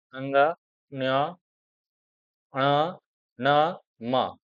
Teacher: Nasik Vyanjan. These five, the last letter of each family, like Anga, Nya, Ana, Na, Ma, is nasal consonant.